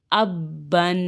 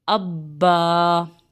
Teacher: اس میں ہم نے الف کو نہیں پڑھا، لیکن جب آگے وقف آ گیا تو پھر ہم پڑھیں گے حمزہ زبر با، اب با زبر الف با، اب با۔ ٹھیک ہے، وقف میں ہم نے ایک زبر پڑھنا ہے، ایک الف کے برابر کھینچنا بھی ہے با کو